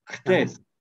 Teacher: Bu ksi değil. Bu h gırtlak h'si bu.